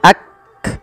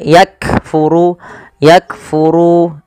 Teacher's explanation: cara membacanya yaitu bacaan syiddahnya dulu yaitu Kaf itu ditahan suaranya Ak baru dikasih Hames Hames itu mengalirnya nafas maka yak seperti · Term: huruf Kaf